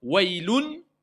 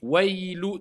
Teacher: Dès qu'on a dit ou, on passe à l'autre lettre avec shidda. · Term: idram